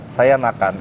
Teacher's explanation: M itu sebenarnya kita menggantinya dengan bunyi N yang tebal. N. Nah, N-nya, N-nya itu lidahnya bukan ke langit-langit tapi ke gigi.